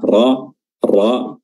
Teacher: Ra sendiri makhrajnya adalah ujung lidah bertemu dengan langit-langit bagian depan